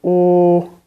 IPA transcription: o: